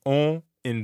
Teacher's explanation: practice saying o like the letter o in english but purse your lips almost like you're blowing a kiss and send air through your mouth and your nose at the same time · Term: nasal sounds